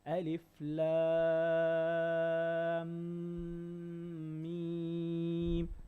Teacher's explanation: between the lam and the meme, you have to make ghunna.